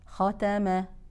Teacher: التفخيم اذا المفخخه او الخوف اقراها وليست يعني ختاما وليست خدمه افخم الخام ثم اعود لترقيق التاء والميم